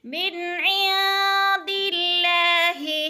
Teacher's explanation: نون ساکن کے بعد دال حروف اخفا میں سے ہے تو اخفا کریں گے، یعنی ناک میں آواز لے جائیں گے